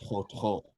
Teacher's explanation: when we pronounce tļotļó, we pronounce the stress or the emphasis as on the second syllable.